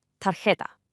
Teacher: That J in the middle creates a soft, breathy H sound. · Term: J sound